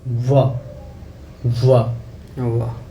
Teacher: दांत और होट लग रहा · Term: वकार